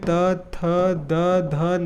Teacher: त वर्ग के सभी वर्णों का उच्चारण आपका दांत से होता है